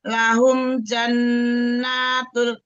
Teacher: Lahum jannatul, jadi nanya jangan terlalu kepanjangan tapi nunnya ditahan. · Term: guna musadadah